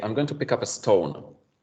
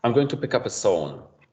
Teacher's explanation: Because let's say you want to say, I'm going to pick up a stone. ST, a cluster, may be difficult, so learners may want to delete one of the consonants, and then you'll end up with, I'm going to pick up a tone.